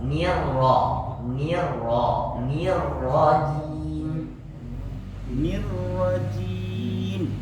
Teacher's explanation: Jadi ni tipis, kemudian ra huruf tebal.